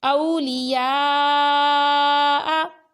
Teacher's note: حروف مدہ کے بعد یا کھڑی حرکات کے بعد حمزہ اسی کلمے میں ہے تو یہ مد ہے مد متصل، اور اس کو 2 اڑائی الف یعنی 4 یا 5 حرکات کی مقدار تک کھینچ کر پڑھنا ضروری ہے